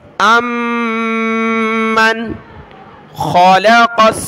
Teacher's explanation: تو یہاں پر دیکھیں خا ہے حروف حلقی کا حرف، تو یہاں پر ہم نے نون ساکن کا اخفا یعنی ناک میں آواز نہیں چھپانی